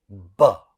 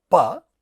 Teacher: which for which we have additional vibration in vocal cords so a sound like ba is also unaspirated like PA